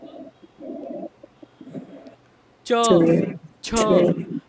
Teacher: तालव्य का च छ बघा वरती जीभ लागते